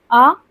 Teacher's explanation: विवृत यानी पूरी तरीके से अगर देखें मुख द्वार पूरा खुला हो